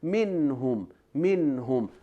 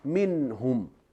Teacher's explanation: We have ghunna, but it's not complete.